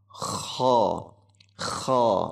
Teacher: Kadhibatin kha, itu ilhar halqi dijaga jelas. Kha huruf kha itu tebal dan ngorok. Kha menggunakan o, jangan dibaca khu bukan kha.